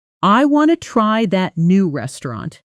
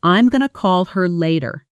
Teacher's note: The blending of want to into wanna and going to into gonna in fast, casual speech.